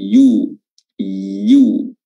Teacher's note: Lil yusra, yu, ya, pada huruf ya atau dhammah pada huruf ya itu diperjelas dengan memonyongkan kedua bibir ke depan, yu. Baik.